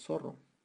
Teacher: pronunciamos la s en vez de la z